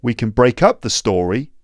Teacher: so can that little modal verb there is pronounced with a weak form because it's not one of the stressed words so it gets squashed we can break up the story not